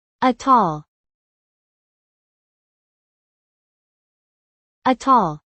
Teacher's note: The final T becomes very soft.